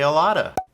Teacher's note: Be careful, the T sounds more like a D, that's why it's gray. And a lot of people don't even say the F, so you just say a lotta